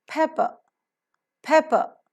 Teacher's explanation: Per sound occurs at two places. The first per is to be accented and aspirated. The second is not to be accented, not to be aspirated.